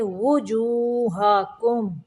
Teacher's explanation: واو کے اوپر پیش پڑھیں گے، وا نہیں پڑھیں گے